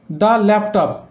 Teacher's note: ল্যাপটপ ল্যা ল দিয়ে উচ্চারণ শুরু হচ্ছে, ল একটা কনসোনেন্ট সাউন্ড হয়, তাই এর আগের দাকে দা উচ্চারণ করব